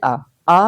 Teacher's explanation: विवरित स्वर मतलब जिसमें मुख का सबसे बड़ा हिस्सा खुलता है · यानी कि विवृत स्वर है आ। आ बोलने में सबसे ज्यादा मुख खुलता है।